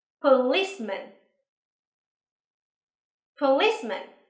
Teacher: nhớ là trọng âm rơi vào âm tiết thứ hai nha